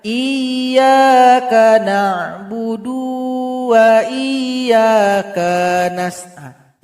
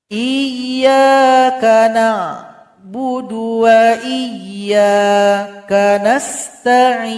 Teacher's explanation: karena huruf dal, huruf kaf, dia tidak dipanjangkan maka bunyinya digabungkan kepada huruf berikutnya